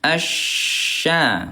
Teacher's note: Ini Bunda huruf syin tempat keluarnya yaitu tengah lidah.